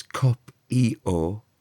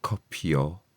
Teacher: we want you to pronounce the vowel on its own and not turn it into a y sound. That happens before the vowels with the letter I sometimes.